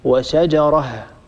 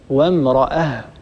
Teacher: يحذف التنوين ويوقف على الهاء الساكنة